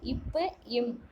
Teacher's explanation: மேலிதழும் கீழிதழும் பொருந்துவதால் பிறப்பவை